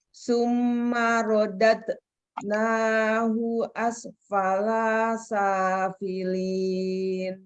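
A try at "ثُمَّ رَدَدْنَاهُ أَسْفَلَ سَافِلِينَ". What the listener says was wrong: Summa rodad nahu asfala safilin. Ada kokolah lagi.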